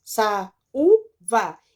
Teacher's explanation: O A e o U ficaram separadas. Saúva. Então, aqui aconteceu um hiato.